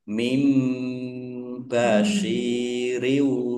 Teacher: nun sukun bertemu dengan huruf ba, bacaan iklab. Nunnya dibaca mim dulu, ya, ditandai ada mim kecil berdiri.